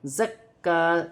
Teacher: کاف مشدد ہے، اسے بھی جماؤ سختی کے ساتھ ادا کیا جائے گا اور ایک الف کی مقدار کھینچ کر بھی پڑھا جائے گا.